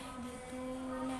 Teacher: terdapat mat tabi'i dibaca panjang 2 harakat